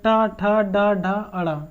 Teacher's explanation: तो टा वर्ग हमारा जो होता है मूर्धन व्यंजन होता है, टा, ठा, डा, ढा, अड़ा, क्योंकि इनको जब बोलेंगे तो हमारी जो जीभ है वो पलट कर जाएगी और मूर्धा से स्पर्श होकर नीचे आएगी, इसलिए उनको बोला जाता है मूर्धा।